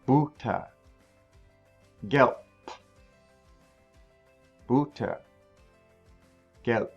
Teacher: Okay, the B in German is like the B in English, at least at the beginning of a word. At the end of a word, it has more of like a P sound. It's not vocalized.